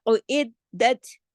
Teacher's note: عید، عین کی آواز الگ ہے، ٹھیک ہے، اور عید، اور دال پہ تشدید ہے، سختی سے جوڑنا ہے، دال 2 مرتبہ پڑھا جائے گا